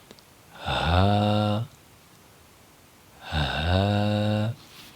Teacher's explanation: ہا کا جو مخرج ہے وہ حلق کے سب سے آخری والے حصے سے ہا کو ادا کیا جائے گا